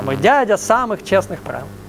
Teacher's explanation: это двухстопный размер, в котором ударяется второй слог, вторая стопа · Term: ямб